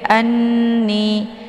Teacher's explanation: wa dibaca pendek kemudian Anni di sini ada Nun yang bertasydid Nun yang bertasydid dinamakan dengan khunnah cara bacanya yaitu didengungkan